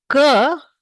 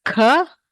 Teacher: We also regulate the vibration of the vocal cords. So, K, there is no vibration and there is lesser amount of air. Whereas K, there is no vibration, but the amount of air is more. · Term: mahaprana